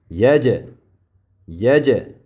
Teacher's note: X'p keyin ya harfi ya mana bu ya bu fatha bo'ldi ya deymiz undan keyin jim harfi sukun mana bu sukunda e'tibor beramiz jim harfini sukuni bu yaj yaj ho'p jimni sukunlik bo'lgan paytida qalqala qilib talaffuz qilinadi